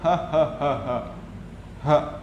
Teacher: seperti ketawa H ha keluarnya dari dada